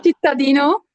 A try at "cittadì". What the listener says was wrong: È cittadì, diventa tronca in bergamasco.